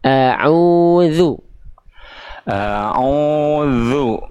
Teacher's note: Jadi ainnya dipanjangkan, bukan zalnya yang ditekan.